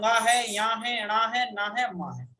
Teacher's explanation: प्रत्येक वर्ग का पंचम वर्ण जो है वो नासिक है, यानी नाक से बोला जाता है